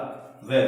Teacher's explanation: हमारे दांत और होठ दोनों के अंदर से हवा निकलने के कारण इसका नाम हो गया दंत ओष्ठ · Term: दंतोष्टम